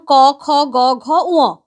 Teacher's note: শ্বাসবায়ু যখন কন্ঠে বাধা প্রাপ্ত হচ্ছে তখন সেইখান থেকে যে ধ্বনিগুলো উচ্চারিত হচ্ছে তাদেরকে আমরা বলছি কন্ঠ ব্যঞ্জন।